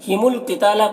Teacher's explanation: قاف کو پر پڑھنا حروف مستعلیہ میں سے، اور تا میں الف مدہ ہے، اسے ایک الف کے برابر کھینچیں گے۔